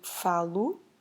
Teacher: So for eu, meaning I have to change falar into falo, because that O we pronounce it as a soft U, is the ending for present.